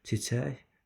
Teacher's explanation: Burda çiçək şəklində söz sonundakıda xışırıq kimi tələffüz olunacaq.